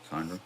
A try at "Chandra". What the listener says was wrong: You said Sandra. It sounds like Sandra every time. Chandra. Like Chekhov. Like Pavel Chekhov. CH.